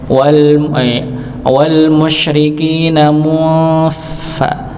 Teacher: Di sini ada huruf fa, maka sudah mulut ini sudah posisi mau kepada huruf fa yang tempatnya ujung gigi seri atas bertemu dengan bibir bagian dalam, bagian bawah, bagian bawah yang di dalamnya, bukan di depannya, wal musyrikina mufa.